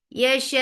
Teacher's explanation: It's like hiccup or it's like something has stuck into your throat because the sound cuts off very sharply. Yasha. The sounds cut off because of the sharpness of hamza, not because of the nabar.